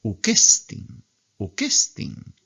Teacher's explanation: Como tiene acento agudo, sube en el tono.